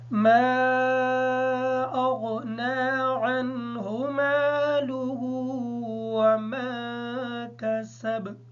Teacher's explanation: عین کو ادا کرتے وقت اس بات کا خیال رکھیں گے کہ کہیں حمزہ ادا نہ ہو جائے